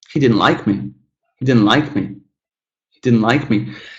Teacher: see how he didn't, and then also me, are kind of squished together